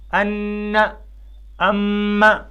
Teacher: پہلی ہے نون مشدد اور میم مشدد میں، جیسے ان، ام، تو آپ نے دیکھا کہ ان اور اما دونوں میں آواز ناک میں جاتی ہے اور ناک کے بانسے سے ادا ہوتی ہے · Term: غنہ